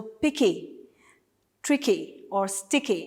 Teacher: the stress is on the second last syllable of the words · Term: feminine rhyme